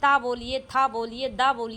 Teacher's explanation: जैसे ही आप बोलेंगे ता, था, तुरंत आपकी जीभ दांतों को स्पर्श करेगी